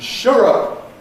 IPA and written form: ˈʃʊr ˈʊp (shut up)